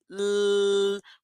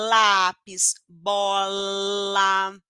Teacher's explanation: a minha língua encostando lá no meu dente vibro o pescoço L consigo prolongar o som então aqui o ponto articulatório é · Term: língua dental